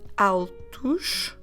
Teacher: although it ends at the letters o s our pronunciation should be ush